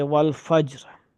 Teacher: والفجر پر اگر اسی طرح سے وقف کریں تو را کو باریک پڑھیں گے